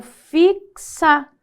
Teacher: o x se desmembra fixa como se fosse um k e um s